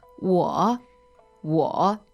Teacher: So the first word is 我 W-O, third tone.